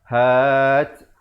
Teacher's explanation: Ada hamas bunyi angin di akhir tu.